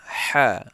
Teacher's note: Ha itu keluarnya di tenggorokan tengah.